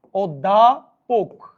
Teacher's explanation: কারণ আমরা জানি অধ্যাপকটা কিরকম উচ্চারণ হচ্ছে, তোরা দেখ ভাই, অধ্যাপক। তাহলে দেখেন অটা আর অ নাই, ও হয়ে গেছে, তার মানে এটা সংবৃত উচ্চারণ।